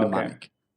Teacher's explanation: you can kind of forget that first M in the word mnemonic. It starts with an N in pronunciation.